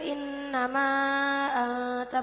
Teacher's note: Innama anta maja ismu fasil karena huruf mad bertemu hamzah berbentuk alif di lain kalimah. Panjangnya 2,5 alif atau 5 harokat.